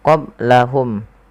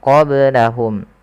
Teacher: Nah, ketika melafalkan qaf lebih tebal sedikit. Kemudian qablahum ada ba sukun maka dibaca dengan qalqalah. Kesalahan yang terjadi adalah tidak memantulkannya.